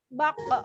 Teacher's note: Dari pangkal lidah. Maka qaf tersebut ketika sukun, kembalikan huruf tersebut memantulnya adalah di makhrajnya.